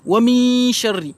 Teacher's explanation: J'ai dissimulé le noun. Et en même temps, je dois faire une assimilation, passer directement dans le shin. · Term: ikhfa